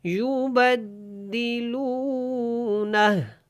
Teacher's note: نون کو ہا کے ساتھ ملانا ہے اور ہا کی الٹا پیش ختم ہو جائے گی